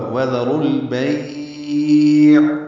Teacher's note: عین وسط حلق سے ادا ہوگا اور اس پہ اظہار ہوگا۔ یہ غلطی یہاں پہ یہ ہوتی ہے کہ لوگ عین کو ہلا دیتے ہیں، یعنی اس پہ قلقلہ کرتے ہیں، وذروا البیع اور بیع پڑھتے ہیں، یہ دونوں غلط ہیں، بیع پڑھنا ہے معروف طریقے سے۔